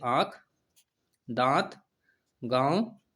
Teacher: जिन स्वरों के उच्चारण में हवा मुख के साथ साथ नाक से निकलती है उन्हें अनुनासिक स्वर कहते हैं।